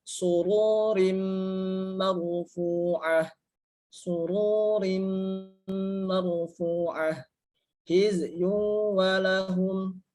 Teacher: Hizyu walahum artinya huruf nya dimasukkan ke dalam huruf waw. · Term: idgham bi gunnah